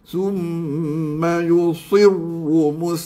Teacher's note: Sad yang kasrah ini dia telah terpengaruh dengan ra yang tebal.